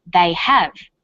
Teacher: Because stressed the auxiliary verb have, the h sound is pronounced.